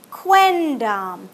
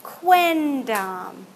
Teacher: the language evolved so that you would not have an m here anymore it evolved to have an n